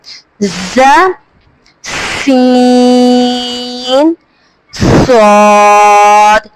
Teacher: یہ زبان کی نوک اور دونوں دانتوں کے اندرونی کنارے سے ادا ہوتے ہیں، زبان کی جو نوک ہے اور دونوں جو دانتوں کے اندرونی کا جو کنارہ ہے وہاں سے ادا ہوتے ہیں۔ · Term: سیٹی والے حروف